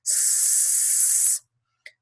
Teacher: Bien, la siguiente serie corresponde a los sonidos que llamamos fricativos. Estos sonidos tienen una salida de aire constante. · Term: sonido fricativo